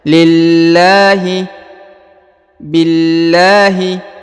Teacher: Bismil, ya, ini harokat i sebelum huruf lafzul jalalah, ya, atau lafaz Allah, maka lahnya dibaca tipis